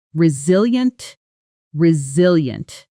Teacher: Four syllables. Stress on the second.